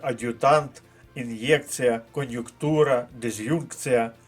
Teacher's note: апостроф вживається тільки після твердих приголосних відповідно і вимова повинна бути твердою